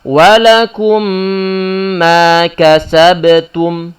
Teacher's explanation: Maka mim pertama ini dimasukkan dalam mim yang kedua. Saat dimasukkan dalam mim yang kedua, maka menjadi satu mim yang bertasydid secara suara. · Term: idgham ma'al gunnah